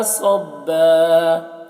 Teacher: میم میں مد ہے تو اس سے زیادہ کھینچیں گے صبا یہاں پر وقف کریں گے تو یہ صبن نہیں پڑھا جائے گا بلکہ صبا پڑھا جائے گا